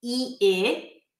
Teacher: the sheep ship is a vowel pair that is produced in the front of the mouth. The voice resonates in the front, the tongue rolls forward, it's high, and it rolls forward, e, I.